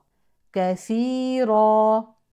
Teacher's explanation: الراء المفتوحه تفخم وقفا تنوين النصب مد عوض